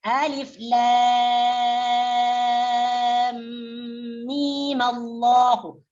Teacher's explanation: Jadi alif lam mim ini apabila mau diwasal dengan lafaz Allahu dengan lafaz jalalah, maka mim yang terakhir ini dibariskan fathah di atas dan mimnya dipanjangkan 2 harokat.